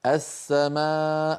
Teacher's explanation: السماء هذه لام التعريف، اللام ليس عليها سكون والسين عليها شدة. دليل على أن اللام لام التعريف قد أدغمت في السين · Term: الإدغام الكامل